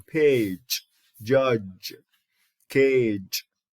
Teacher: is a voiced post-alveolar affricate